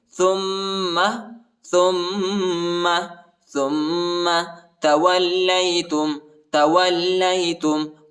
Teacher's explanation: تا کو میم کے ساتھ ملائیں گے اور غنہ بھی کریں گے